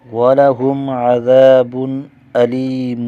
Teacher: وَلَهُمْ میم پر اظہار شفوی ہوگا، غنہ نہیں کریں گے، عذاب تنوین پر بھی اظہار ہوگا، غنہ نہیں کیا جائے گا